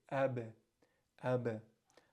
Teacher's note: You're going to close your lips, ab. All right, and that's what sukoon does. The sound comes to an abrupt stop